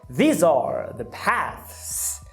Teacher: Já na 6, a frase estes são os caminhos, these are the paths, você vai colocar um S, porque a palavra path acaba com a interdental desvozeada, e toda vez que uma palavra acabar com um fonema desvozeado, você vai colocar outro desvozeado, que é o caso do S, certo?